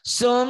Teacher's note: Mim dan nun yang bertasdid hendaklah dibaca gunnah. Dibaca dengung ke hidung yang nyata.